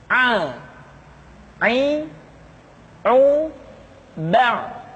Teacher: pengucapan huruf A dikeluarkan dari tengah-tengah tenggorokan seperti kita mengucapkan huruf H. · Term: huruf Ain